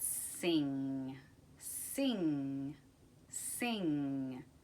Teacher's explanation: the word sing sing sing and when you say that word at the end the n g sound hopefully you should feel somewhere near the back of your tongue up hitting kind of like the soft palate back of the upper palate [Music] that is that meeting point